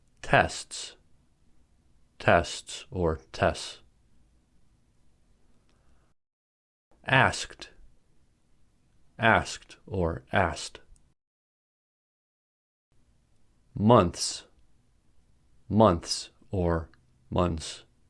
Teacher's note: a long consonant cluster can be challenging even for English natives when there are three or more consonants in a row the middle one can be dropped